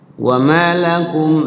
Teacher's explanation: jadi panjangima jadi madwanwin namanya maakum Mim mati ketemu lamhar syafawi izhar artinya jelas syafawi artinya di bibir artinya mimnya jangan disamarkan terbaca jelas